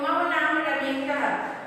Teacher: ये विसर्ग का जो उच्चारण है ह की तरह होता है